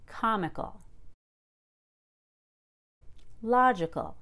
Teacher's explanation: use our volume to stress so it's not comical it's comical i keep calm but i go up in pitch